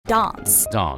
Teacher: BATH broadening, so that people would say daance